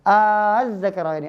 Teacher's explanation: Ketika ada lam bertemu setelahnya huruf zal, yaitu za sana, ya, tiba, thumma sil rahiman tafus dif za ni'am huruf zal, maka kita menjadikan huruf lam ini masuk ke huruf berikutnya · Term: idgham syamsiyah